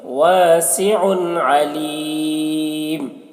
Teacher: یہاں پر تنوین کے بعد حروف حلقی میں سے عین ہے تو یہاں پر اظہار ہوگا. تنوین کو ظاہر کر کے جلدی پڑھیں گے